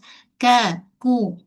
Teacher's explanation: Bukan macam huruf qaf. Kalau kaf atas sikit pangkal lidah permulaan lelang keras. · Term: Huruf kaf